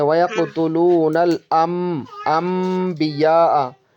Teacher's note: یہاں پر اقلاب ہوتا ہے، یعنی نون ساکن کو ہم چینج کر دیتے ہیں با آنے کی وجہ سے